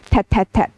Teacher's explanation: So for example the child consistently replace the k sound to a t sound